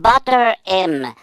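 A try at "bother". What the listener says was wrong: Ouais, c'est parce qu'il le prononce pas bien. C'est pas butter, là.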